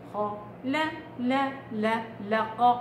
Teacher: الخاء مفخمة تفخيم منفتح، والقاف نفس الشيء خ ق بس اللام لا.